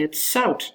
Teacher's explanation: The t influences the z, and it takes away the voicing, and it becomes voiceless. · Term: Progressive assimilation